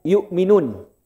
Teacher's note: Hamzah itu tempatnya di mana? Tenggorokan bawah Pak.